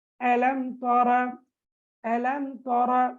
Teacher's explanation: நாங்க இந்த சுக்கூன் செய்யப்பட்ட மீமை வெளிப்படுத்தி ராகமின்றி, அதாவது குன்னா இன்றி ஓத வேண்டும். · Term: இல்ஹாரு ஷஃபவி